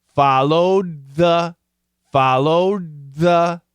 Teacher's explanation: the D and the th become one sound okay the D and the th become one sound one sound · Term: perfect blending